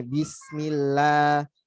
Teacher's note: kalau sebelumnya kasrah dia dibaca tipis seperti ini nih bismillah la bukan lo bukan bisnis Oh ya